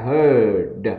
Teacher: âm ơ hơi cong lưỡi đấy nhỉ, heard a loud noise.